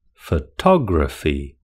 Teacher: The second syllable has the main stress in photography.